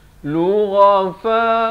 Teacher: ghain makhrajnya di hujung kerongkong